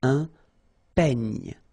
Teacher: It's ny, the last sound. And then this E combination will give you this E, open E.